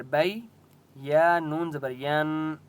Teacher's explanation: نون کے اوپر تشدید ہے، یہاں پر غنہ ہوگا